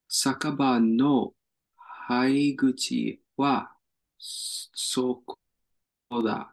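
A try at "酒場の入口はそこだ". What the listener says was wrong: Hi, good guess. This is actually iri. So iriguchi. That kanji can be pronounced as hai, like in hairu.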